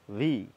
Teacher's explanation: কি করে বললাম? উপরের দাঁত এবং নিচের ঠোঁট